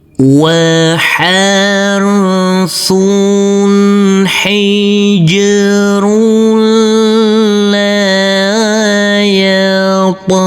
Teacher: Huruf ro yang berdhammah tanwin bertemu dengan huruf lam yang bertasydid, maka tanwinnya kita leburkan, langsung masuk ke huruf lam. Huruf lam cukup kita tekan, dan kita tahan karena ini adalah bacaan idgham bila gunnah. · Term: idgham bila ghunah